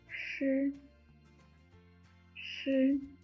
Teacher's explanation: When you pronounce sh, Hold up the tip of your tongue, but leave a narrow slit to allow the airflow comes out from it.